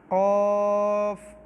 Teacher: یہ حلق والا کاف ہے اور یہ منہ کے خالی حصے سے ادا ہوتا ہے